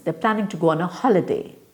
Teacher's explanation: So the planning, go, holiday is stressed. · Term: stress patterns